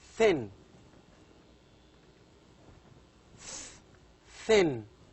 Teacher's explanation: the tip of the tongue touches the upper front teeth to produce thin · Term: voiceless dental sounds